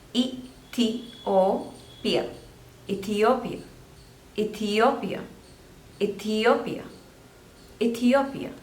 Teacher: So there are 4 syllables and you have to stress on the third one.